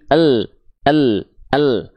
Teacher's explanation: walaupun kalau kita latinkan lam diwakilkan dengan l tapi l-nya bukan l yang ujung lidah doang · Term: makhraj huruf lam